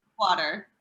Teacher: when you get to the midwest of the us the a's become longer and a little flatter